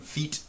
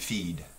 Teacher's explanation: When feet, the vowel sound is very short, you spell that with an I. Feed, the vowel sounds a little longer, okay? And you would spell it with all of those different ways that are listed here, okay?